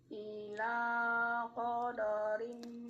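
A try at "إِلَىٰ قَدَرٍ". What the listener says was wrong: Koda. Keterkontaminasi sama huruf qaf. Ulangi. Koda. Ila qadari.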